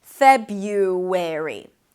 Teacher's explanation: you can drop, actually, the first R and pronounce it as FEB-yuw, with a 'y' instead